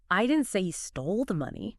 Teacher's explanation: And stressing stole I didn't say he stole the money. Maybe he borrowed it or lost it but didn't steal it.